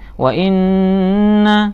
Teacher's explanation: Wa inna ada tasdid di sini, bacaan gunnah harus ditahan.